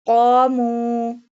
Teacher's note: qaf pronounced boldly with a thicker voice